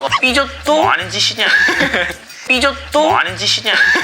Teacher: his voice goes a bit higher up than it normally does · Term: intonation